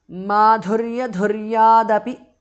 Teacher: The th in the end changes to d because of sandhi. Api madhurya dhuryadapi because of sandhi.